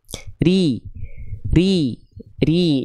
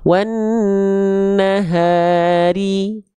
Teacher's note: Cara menyempurnakan harokat kasroh itu dilafalkan dengan bunyi vokal i dengan cara apa? Dengan cara mengangkat bagian tengah lidah kita.